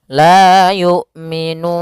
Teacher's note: ada mim mati bertemu dengan lam, maka dinamakan dengan izhar syafawi. Mimnya harus jelas.